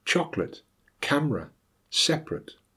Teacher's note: they are all words that should have three syllables but have been reduced to two by dropping the schwa